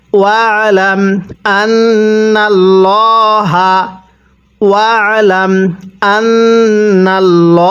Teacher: এখানে আল্লাহ শব্দের পূর্বে জবর আছে, এজন্য আল্লাহ শব্দটাকে মোটা করে পড়ব। এখানে আন্নাল্লাহ এরকমভাবে পড়লে পড়াটা সহি শুদ্ধ হবে না।